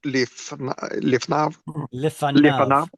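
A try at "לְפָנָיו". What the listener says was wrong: Don't rush those vowels right there. Lifanav.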